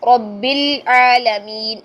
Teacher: رب العالمین، بل لام ہل گیا نا، نہیں ہلانا ہے لام کو، لام ساکن کو نہیں ہلانا ہے.